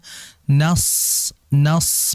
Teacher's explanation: Jadi sad itu kan pengucapannya ujung lidah ditempelkan gigi seri bawah. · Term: huruf sad